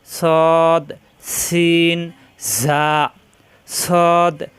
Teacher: জিহ্বার আগা নিচের দুই দাঁতের পেট ও আগার সঙ্গে লাগাইয়া শীষ দিয়ে উচ্চারণ করতে হয়